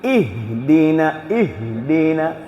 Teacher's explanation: ഹംസും ഹാവും ഒരേ ഭാഗത്ത് അപ്പൊ രണ്ടും ആ ഒരേ ഹൽക്കിൽ ഒരേ മഹ്റജിൽ നിന്നാണ് വരുന്നത്